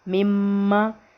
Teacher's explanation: ایک الف کے برابر ناک میں آواز چھپا کر پڑھیں گے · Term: غنہ